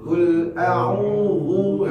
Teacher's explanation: hati-hati qaf tidak hams, yang hams itu kaf